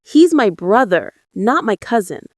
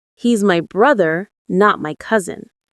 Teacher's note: The stress on brother changes the meaning. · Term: contrastive stress